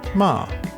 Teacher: the 4th tone's pitch doesn't stay constant. It's what we refer to as a contour tone, where the voice has to pitch up and down within a single syllable.